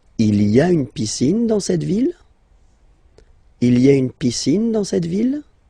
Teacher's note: don't forget to raise your voice at the end because it's a question